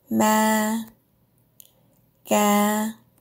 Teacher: The first is a flat tone, with no mark, not low, not high.